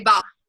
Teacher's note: Instead of saying ball, they might say ba, because they're leaving off that final sound. So that's called final consonant deletion.